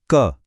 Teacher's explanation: जीभ ने ऊपर तालु को पूरी तरह टच किया ना, बस यही स्पृष्टा है।